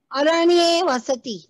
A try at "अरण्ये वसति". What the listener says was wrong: उत्तमम्,